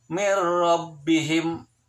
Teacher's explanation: Atau contoh yang lain, yang nun mati ketemu sama ro, tulisannya adalah min rabbihim, nun mati min rabbihim, tetapi tidak boleh dibaca min rabbihim. Seakan-akan bertasydid pada ro, seakan-akan hilang nunnya. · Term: idgham bila gunah